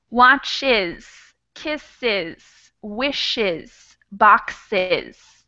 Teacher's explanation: we're going to add a whole extra syllable to pronounce the S